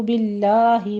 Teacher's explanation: باللہ میں لفظ جلالہ کو باریک پڑھنا ہے